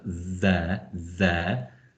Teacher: that involves a tongue uh beneath your front teeth and a kind of slightly buzzing sound